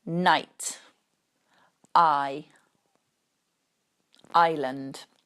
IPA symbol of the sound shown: aɪ